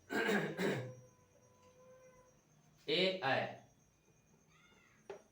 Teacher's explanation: देखिए ए और ऐ जो है इनको कंठ तालु से कहा जाता है, कंठ प्लस तालु